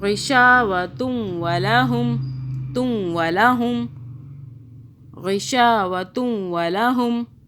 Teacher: غشا کو صرف کھینچا ہم نے، ایک الف کے برابر کھینچنا ہے